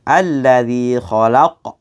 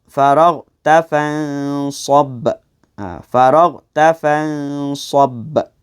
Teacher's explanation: Itu qalqalah kubra. Bunyi detakannya lebih tebal.